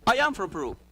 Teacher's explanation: If you notice, one sound appears between I and am. The ja sound.